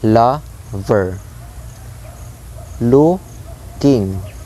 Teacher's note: So basically the sound is like dum, da, high stress sound, and then the low unstressed sound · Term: trochee or trochaic foot